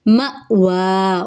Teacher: مأوا، یہ حمزہ ہے، الف نہیں ہے کیونکہ اس کے اوپر جزم آ گئی ہے تو اس کو جھٹکا دے کر پڑھیں گے۔ مأوا، واو کے اوپر کھڑا زبر ہے، ایک الف کے برابر لمبا کریں گے